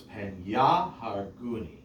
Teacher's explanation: There's the accent on the second to last syllable, and there's a secondary accent as evidenced by this meteg on the ya.